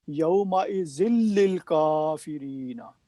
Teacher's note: نون ختم کر دیا کیونکہ یہ ادغام تام ہے، یہاں پہ نون کلیہ طور پہ ختم کر دیا جاتا ہے، پڑھا نہیں جاتا۔